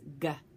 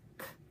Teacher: K and the g in the very back of your throat one is voiced and one is unvoiced so voiced is G and unvoiced is C